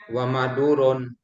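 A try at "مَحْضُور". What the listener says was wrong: Enggak ada wanya.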